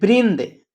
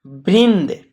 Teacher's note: बिंदु जो है न का उच्चारण करता है और द यानी वृंद देखिए बोला जा रहा है तो नाक से आवाज आ रहा है हल्का